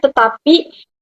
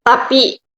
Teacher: aferesis, yaitu penanggalan bunyi di awal kata. Contohnya tetapi penanggalan fonemnya yaitu tapi.